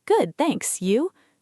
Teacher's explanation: Short, warm, with rising intonation on you.